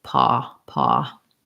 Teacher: paw has the rounded, semi-rounded vowel. Open up the jaw more. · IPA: /ɔ/